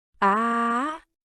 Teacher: it has a rising and short tone